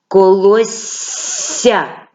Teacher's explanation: приголосний Ілля звук один подовжений бук на його позначення дві колосся звук подовжений але він один а букне його позначення 2 читання подовжений звук м а бук